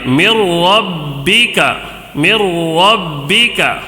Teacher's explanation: ادغام بلا غنہ، ٹھیک ہے، غنہ نہیں کرنا ہے